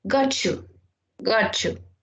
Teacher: the T sound changes to a ch before a ya